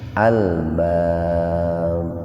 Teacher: Matabi wawu lil alif lam qamariyah al-bab qalqalah kubro. Huruf ba mati di akhir kalimat atau jatuh pada waqaf itu, dipantulkan dengan berat itu.